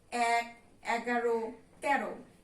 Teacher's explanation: সংখ্যাবাচক শব্দের ক্ষেত্রে এ ধ্বনির উচ্চারণ হলো বিবৃত হয়